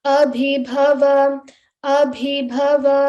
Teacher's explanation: Two bha mahapranas in a row.